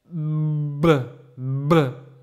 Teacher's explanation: The B sound is actually so relaxed that I can kind of make it last in my mouth before letting the air go. Like B, like this, I cannot do this with P.